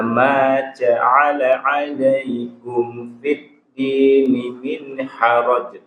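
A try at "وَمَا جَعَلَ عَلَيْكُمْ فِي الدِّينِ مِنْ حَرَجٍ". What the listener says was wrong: Konsentrasi, ulang. Huruf jim nggak boleh mendesis.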